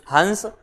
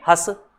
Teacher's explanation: अब ये चंद्रबिंदी है तो अकेली नाक की ध्वनि का प्रयोग नहीं करेंगे, श्वास वायु नाक और मुख दोनों से निकलेगी, इसलिए हस।